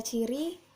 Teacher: huruf C mati, oral, lamina palatal, dan afriksasi